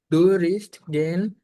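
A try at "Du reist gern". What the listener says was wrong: দু রাইস্ট, রিস্ট না, রাইস্ট। দু রাইস্ট, তারপর দু রাইস্ট জ্ঞান।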